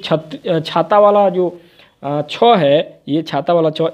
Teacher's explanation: छाता वाला जो छ है, इस ध्वनि का जो उच्चारण होता है ये आपका तालव्य के माध्यम से होता है